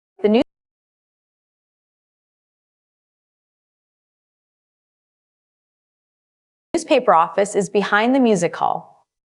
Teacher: Use a slight rising intonation on the preposition behind to emphasize the specific location.